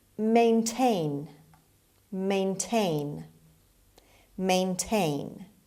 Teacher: the stress is on the second syllable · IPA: /meɪnˈteɪn/